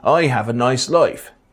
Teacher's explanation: the rounding of the price vowel